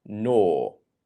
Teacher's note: If you're finding yourself making the R sound, the R, then if you want to build a British English accent, you want to practice not pronouncing the R, and you want to just make it an or sound.